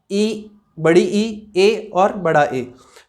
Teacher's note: जो आगे वाले भाग से, जीवा के आगे वाले भाग से बोले जाते हैं उनको अग्र स्वर बोलते हैं।